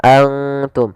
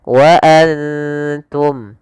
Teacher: Kemudian lafal antum ada bacaan yaitu ikhfa kembali, yaitu adanya nun sukun bertemu dengan huruf ikhfa yaitu huruf ta. Cara membacanya yaitu kita samarkan ke ta dan ta hurufnya tipis